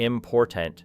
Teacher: natural English normally gives greater energy to the second syllable, creating a shape closer to important